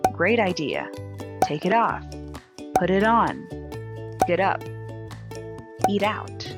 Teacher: an r and a vowel it generally becomes a d sound in phonetics this is called flap or tapped d which means the tongue quickly touches the gum ridge or the roof of the mouth now it should be a soft light sound just a quick